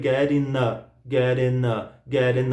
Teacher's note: É muito comum dropar, jogar fora o som do G nos INGs